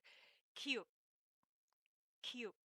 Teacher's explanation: this is a velar sound. It means it's made from the back of the throat, which is tightened and closed.